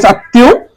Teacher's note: ত এর সাথে ম ত দুইবার উচ্চারণ